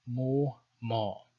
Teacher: in Syriac there's no glottal stop, so it's either in the Western tradition mo or ma in the Eastern tradition. So Western and Eastern, mo, ma.